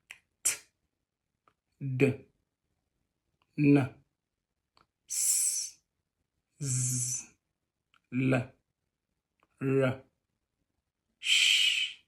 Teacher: In the course of articulation, the tongue and the alveolar ridge are involved